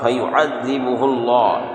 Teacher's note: یہاں پر اللہ کے لام کو موٹا کر کے پڑھیں گے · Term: اللہ کا لام پور